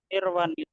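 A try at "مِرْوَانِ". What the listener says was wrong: Belum Mirwan, masih pendek wawunya, nunnya masih sukun. Jadi bacanya Baik, mirwaan.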